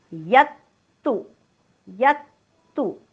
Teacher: यत्तु यरस्वय पुढे आलेलं आहे जोडाक्षर, म्हणून जोडाक्षराचा पहिला अर्धा भाग आघात म्हणून घेतलेला आहे. यवर आघात, डोक्यावर हलंत त.